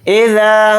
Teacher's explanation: اذا، حمزہ کو جلدی پڑھیں گے، ذال کے ساتھ الف مدہ ہے، ذال الف زبر ذا کو تھوڑا کھینچ کر پڑھیں گے